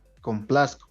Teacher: cuando dice complazco es como si la Z fuera la S nomás, en el modo de hablar, pero en la escritura tiene que estar ahí, ¿no?